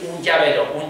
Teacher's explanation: Lo que pasa es que como no es una ñ, es una palatal. Es el alófono palatal de la nasal cuando va a final de sílaba. · Cuando nuestras Ns van seguidas de un sonido palatal, como puede ser una che o puede ser una y, un llavero, esa no es una N alveolar.